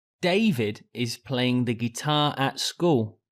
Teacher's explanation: David is playing the guitar at school. So here, as the question was who, I make David the stressed word in the sentence, as that is the most important word for answering the question. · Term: sentence stress